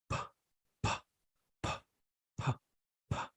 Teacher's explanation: Now this one is voiceless. Why it is voiceless? Because your Adam's apple vocal cord doesn't vibrate.